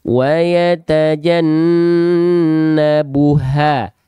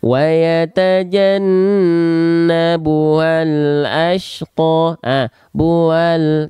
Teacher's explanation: Ha, jelas ada ha, mengalir suaranya dan nafasnya di saat yang bersamaan. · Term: ha besar